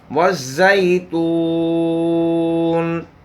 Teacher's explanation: زا سخت ادا کرنا ہے، سفیر والی صفت ادا کرنی ہے۔